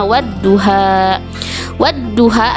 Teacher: bertemu dengan salah satu huruf Syamsiah yaitu cara membacanya yaitu dengan lamnya tidak dibaca tetapi lembur atau masuk ke huruf Syamsiah yang ada di depannya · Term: alif lam syamsiah